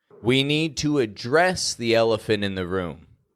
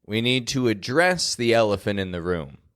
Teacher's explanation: the word address is getting the most strength bringing the attention to the action that we're taking